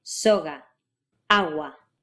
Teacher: Your tongue is up in the back right where you pronounced g and k